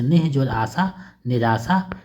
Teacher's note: वर्ण हो तो य र व ह हो हो हो तो विसर्ग के स्थान पर आधा र हो जाता है